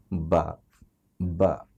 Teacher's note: বা বলার সময় বাতাস বের হবে না